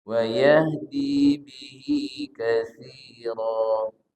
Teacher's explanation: Wa yahdi panjangnya 2 harokat, bihi juga 2 harokat.